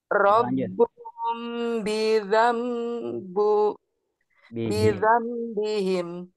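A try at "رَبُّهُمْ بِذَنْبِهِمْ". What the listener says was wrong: Nah, itu robuhum terlalu cepat Bu. Coba ulangi Bu.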